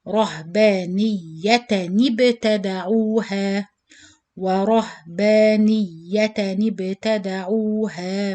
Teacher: to join this noon sakin sound with the ba sakin, you change the noon into noon kasra, not noon sakin